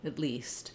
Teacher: in connected speech, the ah sound of at may get a little bit reduced to less than a clear vowel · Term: reduced vowel